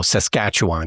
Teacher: it's emphasis on the second syllable and you just let everything else just go